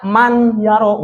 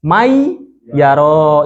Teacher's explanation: ketika ada nun mati ataupun tanwin bertemu dengan salah satu huruf idgham, maka nun matinya ini seakan-akan melebur atau seakan-akan nggak dibaca